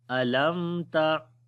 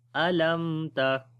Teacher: मीम की आवाज़ को जाहिर करके पढ़ेंगे अलम ता। तो ठीक है, गुन्ना नहीं करेंगे अलम ता, इसको इजहार शफवी बोलते हैं।